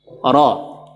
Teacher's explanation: Ra ketika fathah dia tebal, jadi huruf tebal.